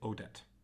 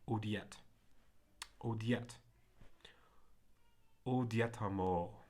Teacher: That I is just going to slip into a consonantal, a ya